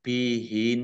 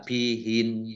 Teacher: itu maka dibacanya ditahan biin Jangan dibaca bihin nah salah ya harus ditahan karena nunnya dobel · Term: Nun tasdid